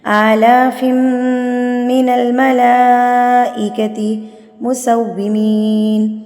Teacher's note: ادغام مع الغنہ، تنوین کے بعد میم آ گئی ہے